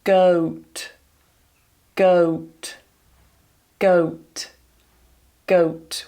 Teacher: I'm starting completely neutral, closing it to an oo.